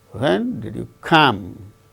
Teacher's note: come is the word that gains the falling tone